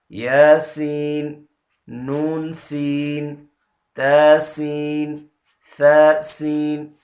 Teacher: سین میں سیٹی اکثر نہیں نکالتے، تو اس کا خیال کرنا ہے کہ سین کی سیٹی واضح ہونی چاہیے